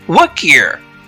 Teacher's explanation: because I connected my speech and am speaking with efficiency, notice that I slightly deleted the h sound in here and said ear.